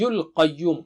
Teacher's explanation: qa is thick and high